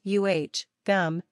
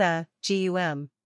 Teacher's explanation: Be sure to put the stress on the first syllable here. The word is pronounced uh, gum, not a, gum.